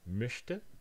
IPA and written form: møçtə (möchte)